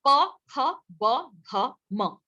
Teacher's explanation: होठों पे जो साउंड प्रोनाउंस होती है, होठों पे जो साउंड उच्चरित होती है, उसे बाइलेबियल बोलते हैं, ठीक है। बाई माने दो, लेबियल मतलब होंठ, बाइलेबियल।